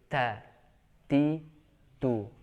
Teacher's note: Cukup mengandalkan udara yang berhembus akibat dilepaskannya dua tepi makhraj, yaitu ujung lidah dengan gusi, gigi seri atas. Ta, ketika diucapkan otomatis ada udaranya. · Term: huruf ta